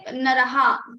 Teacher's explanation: So like short vowel is there, but still they prolong the ha.